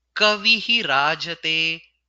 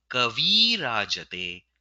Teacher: the Visarga has been removed and the Ikara before the Visarga has been converted to Dirgha Ikara